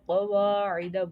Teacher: قاف ہمارا موٹا ہے یعنی حروف مستعلیہ میں سے پڑھا جائے گا